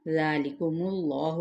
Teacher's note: ذا پہ کھڑا زبر ذال نرمی کے ساتھ